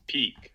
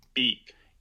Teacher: We have a voiceless aspirated stop for P, peak, and we have a voiceless unaspirated stop for B beak, in initial position.